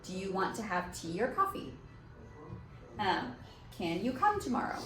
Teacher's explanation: at the end of the question, your voice goes up. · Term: raise your intonation